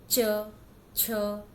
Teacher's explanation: जीभ का मध्य भाग मतलब बीच का हिस्सा जब तालू में जाके लगता है तो वहां से च की आवाज आती है